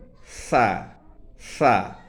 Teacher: জিহ্বার আগাটা উপরের 2 দাঁতের আগার সাথে লাগিয়ে উচ্চারণ করলেই সঠিক উচ্চারণ হয়ে আসবে।